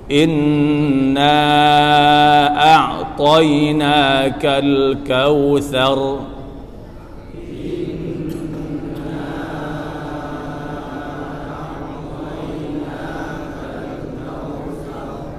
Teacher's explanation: Huruf 'ra' yang diam setelah fatha, seperti yang telah kita pelajari di bab-bab sebelumnya, berarti huruf 'r' dipertebal.